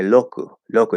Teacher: It's a very clear L to anybody who has an L in their native language. But a Japanese speaker won't hear it because they don't have the L in their language.